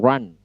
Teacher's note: R-nya tidak seperti R bahasa Indonesia, lidah tekuk ke atas, kemudian ucapkan R. Tekuk ke atas, ucapkan R.